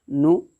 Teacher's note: पेश की हरकत को जल्दी पढ़ते हैं, थोड़ा भी न खींचते हैं, और पेश की आवाज़ आगे जाती है